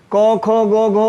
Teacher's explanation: ये वर्ण जो है इन वर्णों का उच्चारण कंठ से होता है और इन्हें कंठे वर्ण कहा जाता है